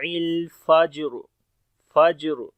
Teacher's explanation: کلکلا کریں گے، وہ بھی کمزور کلکلا ہوگا، اور را کے اوپر جب رکیں گے تو موٹی پڑی جائے گی را